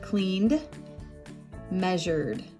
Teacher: so for those two the e d added on will sound like duh like the d d it is voiced so we would say cleaned measured both have D sound the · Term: duh sound